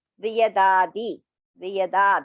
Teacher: Da is Alpa Prana. Di is Alpa Prana.